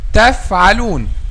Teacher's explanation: by making the edge of the upper two front incisors touch the inner bottom lip